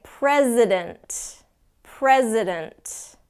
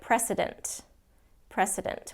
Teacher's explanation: if you don't do the Z it sounds like precedent